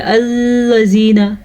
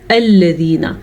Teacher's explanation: लाम नरमी से पढ़ना और लाम के ऊपर बिल्कुल भी रुकना नहीं है। ये या मद्दा है, या साकिन से पहले ज़ेर है तो इसको हम खींच के पढ़ेंगे।